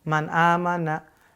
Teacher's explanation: kalau izhar bunyi n tanwin nun sukunnya jelas